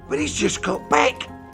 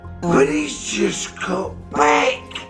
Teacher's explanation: So we've got here the reduction of but he is into but is. We cut the T from just before the consonant just got, and now the word got loses its T sound at the end, which is characteristic of the Cockney accent. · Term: drop of the H sound